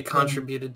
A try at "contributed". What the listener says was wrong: Contributed? Why do you keep putting, emphasis on the wrong syllables?